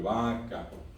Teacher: acento en la primera A